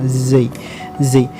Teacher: Saya sendiri menggunakan z dengan menempelkan ujung lidah sedikit pada gigi seri kita bagian bawah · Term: huruf za